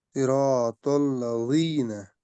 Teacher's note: जाल जबान की नोक ऊपर वाले जो दो दांत है ना आगे, इसके साथ मिलाइए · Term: नरम